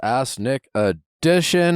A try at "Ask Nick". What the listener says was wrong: That was an ass, Nick. That sounded like ass.